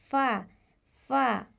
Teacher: फ़ा तब अदा होता है जब आपके ऊपर के सामने वाले दांत जिन्हें सनाया उलिया कहा जाता है उनका किनारा जब नीचे वाले होठ के दरमियान में लगता है तो फ़ा अदा होता है।